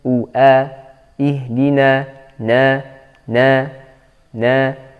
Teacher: harus kita ucapkan dengan Fatah yang tidak terlalu terbuka